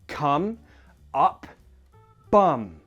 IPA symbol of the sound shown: ʌ